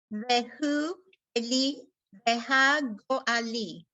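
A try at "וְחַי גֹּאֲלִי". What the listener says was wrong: And don't forget the y, vechai, right?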